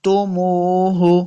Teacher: میم پیش واو مد ہے، اس کو دو حرکات لمبا کر کے پڑھیں گے